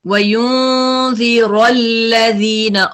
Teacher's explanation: را پہ فتح ہے, اس کو ہیوی کریں